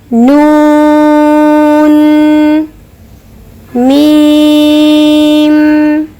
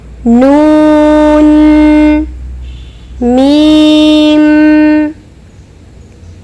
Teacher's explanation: آپ جب حرف کو ادا کریں گے تو آپ خود محسوس کریں گے کہ حرف کو ادا کرتے وقت جو حرف کی آواز ہے وہ ہمارے ناک کی نرم ہڈی یعنی خیشوم میں جا کر ٹھہرتی ہے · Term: صفت غنہ